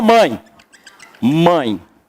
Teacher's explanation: Isso aqui é um ditongo. O A é a vogal. O E, com som de I, né, é a semivogal.